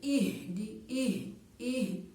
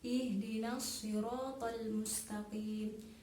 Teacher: H itu keluarnya dari tenggorokan, bukan dari dada. Jadi dalam bacanya itu tidak seperti ih. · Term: huruf H